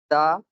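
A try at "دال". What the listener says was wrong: Dal. Dal. The letter is called dal. The sound is da, but the letter is called dal.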